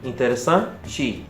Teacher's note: quando o E e o O terminam numa palavra. O E acaba virando o I e o O acaba virando um.